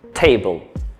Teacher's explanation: es una consonante y se pronuncia como una t ahora bien esta t no es la t que nosotros conocemos en español sino que suena un poco más fuerte o con más intenso con un poco más de aire